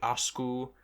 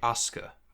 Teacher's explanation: Protoform would be akasu, and then the modern form would be, once the vowel is lost and the metathesis happens, it would be asku, but then u unrounds to be aska